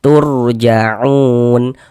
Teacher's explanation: Cuman di sini yang ketika yang kita ketemui dhammah. Maka huruf ra sukunnya dibaca tebal, dibaca tabkhim. Sehingganya pangkal lisan kita naik terangkat ke atas ketika kita mengucapkannya. · Kalau kita mengaji Al-Qur'an apabila bertemu dengan huruf wau sukun ini huruf wau ini tanda sukun sebelum wau sukun ada harakat dhammah nih. Maka huruf yang memiliki harakat dhammah ini dibaca panjang sehingganya u dibaca panjang. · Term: mad thobi'i